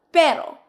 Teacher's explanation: It's a quick tap of your tongue towards the top back of your mouth.